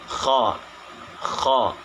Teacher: Dan yang kelima tidak lancar dan perlu kehati-hatian dalam menyebutkan huruf kha. Jadi tempat keluarnya huruf kha itu di bagian tenggorokan atas yang lebih dekat dengan pangkal lidah.